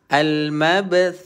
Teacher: Dia tak banyak angin macam huruf sin.